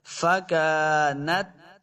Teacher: تا ساکن ہے، تا کی جنبش نہیں دینی. بعض لوگ تا کے اوپر قلقلہ کا دیتے ہیں جب تا ساکن ہوتی ہے.